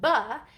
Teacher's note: it's produced with the two lips coming together and it uses our voice